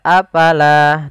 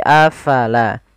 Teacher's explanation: Fa harus alirkan nafasnya